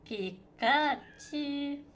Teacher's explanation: a high tone followed by a rising tone followed by another high tone to symbolize powered flight.